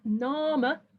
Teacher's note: the A in the first syllable lengthened by Middle English open syllable lengthening